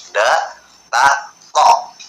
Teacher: Karena huruf ta, da, to itu sama makharijul hurufnya, tapi dia agak yang ada di depan, tengah, sama ke belakang. Dia ujung lidah bertemu gusi atas depan.